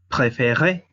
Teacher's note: la sílaba tónica es la E con la Z, pero la Z es muda. Eso hace que la E tenga sonido aunque no está acentuada.